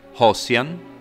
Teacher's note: Third, we don’t find the sound *z, like in Proto-Germanic, but /s/